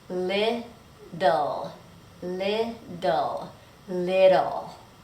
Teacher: notice in American English that those T's are going to sound like a fast D